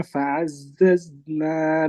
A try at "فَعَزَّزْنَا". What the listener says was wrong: জাটা আরেকটু সুন্দর করেন। ফাআজ্জাজনা।